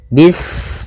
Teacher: Bismillahirrahmanirrahim pada bacaan bis ini sempurnakan huruf sinnya ketika sinnya sukun ini ada sifat safir dia harus kita alirkan nafasnya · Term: sifat shafir